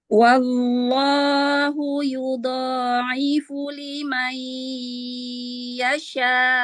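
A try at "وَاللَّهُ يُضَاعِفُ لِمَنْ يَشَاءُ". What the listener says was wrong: Yudho, bo, tambahkan lagi itbaknya pada dot. Naikkan lagi suaranya ke langit-langit mulut. Wallahu yudho, bo.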